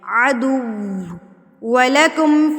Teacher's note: यहाँ पर वाव की अदायगी कैसे की जाती है, वाव की अदायगी होंठों को बिल्कुल गोल कर लें और होंठों को इतना गोल कर लें कि पेंसिल का सिक्का तो उसमें से गुजर सके लेकिन पूरी पेंसिल ना गुजर सके उसमें से, तो होंठों की गुलाई से वाव की अदायगी होती है।